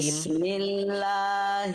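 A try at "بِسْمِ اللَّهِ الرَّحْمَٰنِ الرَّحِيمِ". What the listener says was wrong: sudah bagus tinggal tipiskan mim jangan mo tapi ma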